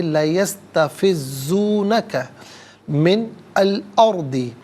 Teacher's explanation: ناظرین من میں ویسے نون ساکن ہوگا، جب ملا کر پڑھیں گے تو نون پر زبر آئے گا۔ الارض کے لام ساکن کے ساتھ ملائیں گے، درمیان میں سے الف یعنی حمزہ کو حذف کریں گے · وَإِن كَادُوا لَيَسْتَفِزُّونَ، یہ علیحدہ ہے، کا علیحدہ ہے، ملا کر پڑھیں گے لَيَسْتَفِزُّونَكَ مِنْ الْأَرْضِ۔ ناظرین من میں ویسے نون ساکن ہوگا، جب ملا کر پڑھیں گے تو نون پر زبر آئے گا